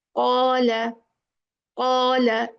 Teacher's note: Qaf is from the soft palate and the back of the tongue.